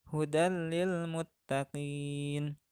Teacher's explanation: tanwin dibaca lebur menghadapi huruf idgham yaitu lam